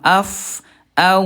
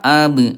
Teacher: huruf fa sama waw rokhwah lemah, af, au lemah, huruf ba syiddah kuat, ab. Kalau mim tengah-tengahnya sedikit mengalir.